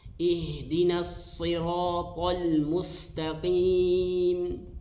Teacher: huruf shad makhrajnya dari ujung lidah disejajarkan dengan gigi depan bagian bawah